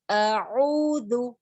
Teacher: عین جو ہے نا یہ وسط الحلق سے نکلتا ہے · خیر, تو یہ عین جو ہے آپ تھروٹ پر ہاتھ رکھیں گے, جو وسط الحلق ہے بیچ کا middle part of the throat ہے, یہ عین وہاں سے نکلتا ہے